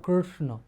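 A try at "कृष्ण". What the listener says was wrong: So it's a different sound. It is not a r. In r, the tongue is touching to the top. It is not a r, it is not a ru, it's not a ri. It's a Krishna, it's a vowel.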